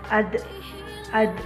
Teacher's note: lidah kita ke gusi bagian atas sebagaimana kita melafalkan huruf ta dalam keadaan mati huruf da terdengar suaranya memantul